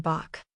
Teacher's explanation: Letter Hate, pronounced like a voiceless velar fricative, similar to the ch in Bach.